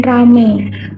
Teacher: Analisis fonologis fonem ramai menjadi fonem ai pada kata ramai berubah menjadi vokal tunggal e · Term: peluluhan fonem vokal